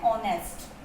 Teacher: ऑनेस्ट में sound ह यहाँ पे साइलेंट है बट ओ यहाँ पे आ रहा है, इसलिए हम एन यूज कर रहे हैं।